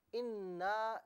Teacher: اس کے بعد second portion میں آپ دیکھیے کہ آپ نے قالو انا، انا میں آپ دیکھیے کہ حرف مدہ تھا، الف مدہ تھا، اس سے ایک الف کی مقدار کھینچنا تھا